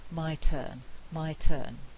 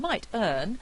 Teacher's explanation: in my turn the T is aspirated because its word initial it's at the beginning and I have to aspirate this T